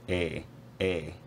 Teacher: And that is that the face vowel almost always, well, always in this sample, has a really quite high mid monophthongal quality, like air. So the tongue is not absolutely at the highest point it could be, but relatively high in the mouth, and it doesn't move while the vowel is being pronounced.